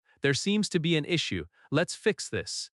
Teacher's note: When expressing problems, keep your tone steady. Falling tone at the end shows control.